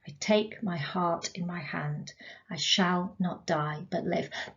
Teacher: it's iambic isn't it unstress stressed unstressed stressed